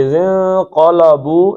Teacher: پورٹ پڑھنا ہے. اذن قلبو، لام پتلا ہی پڑھنا ہے، لام موٹا نہیں پڑھنا. اذن قلبو، اچھا آگے حمزہ آ گیا ہے اور یہ آپ کو پیچھے مد اصلی نظر آ رہی ہے.